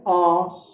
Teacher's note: जब आपका मुंह पूरा वर्त के समान बन जाए, ठीक है, ये आप ये कह लीजिए, जब आपका मुंह पूरा खुल जाए, पूरा खुल जाए, तो विवर्त उसको कहेंगे हम